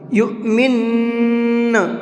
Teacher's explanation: اور دوسرا ہے کہ نون کے اوپر تشدید ہے اور یہاں پر ہمیں وقف بھی کرنا ہے، تو جب ہم وقف کریں گے تو غنہ کر کے ڈبل آواز نکالیں گے